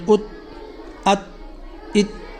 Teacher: اب یہ قلقلہ والا حرف نہیں ہے تو اس کو ہم جیسے ہی حرف مکمل ہوگا فوراً آواز کو روک دیں گے